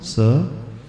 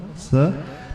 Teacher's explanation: हमारी जिवा टच करेगी कौन से दांत को नीचे वाले दांत को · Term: दंती स